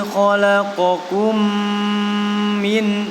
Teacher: Ini hukum bacaan idgham mimi namanya, ya. Mim bertemu dengan huruf mim namanya idgham mimi, ya. Dibaca dengung yang lama.